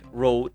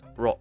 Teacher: Next of that, you have the final consonant deletion, that is the elimination of the final consonant of the word. Like if you have a word like road, it can be pronounced as ro.